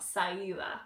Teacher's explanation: If there's an L in the middle of a word, like salida, you take that out